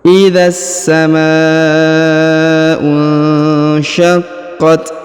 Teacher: huruf q ditahan dan ditekan karena berharakat tasdid ya syaqqat kemudian huruf Ta di ujung diberikan hembusan tipis ya karena berharakat sukun